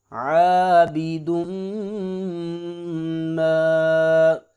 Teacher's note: میم مشدد ہے لہذا میم پہ غنہ ہوگا